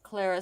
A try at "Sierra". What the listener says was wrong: Sierra, honey. It looks like an L, but it's Sierra. It's in the Spanish. It's Sierra.